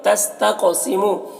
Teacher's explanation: قاف کو پر پڑھیں گے، حروف مستعلیہ میں سے ہے اور قاف میں قلقلہ کریں گے